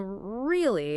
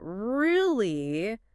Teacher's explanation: If you say it with a high rising tone, really, it sounds like genuine surprise.